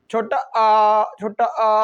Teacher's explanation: छोटा आ यानी कहाँ से बोला जाता है? जीभ के मध्य भाग से